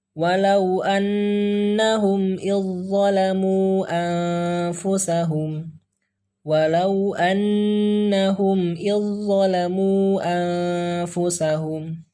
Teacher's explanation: Jadi huruf za-nya tidak kita baca, langsung ke huruf zo.